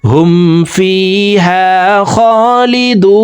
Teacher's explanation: দু এখানে 3 আলিফ টেনে নুনকে সাকিন করে ফেলবো, কারণ পেশের বাম পাশে জাজমালা ওয়াও মদার হরফ, তো এই মদার হরফের বামের হরফে ওয়াকফ হইলে মধ্যে আরজি 3 আলিফ টানিয়া পড়িতে হয়।